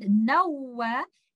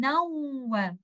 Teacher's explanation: we will merge the sound along with the nasal sound, and we will hold the gunna for some time